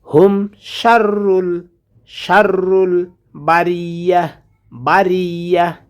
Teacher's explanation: গোলতা আসার কারণে তাটা হা হয়ে যাবে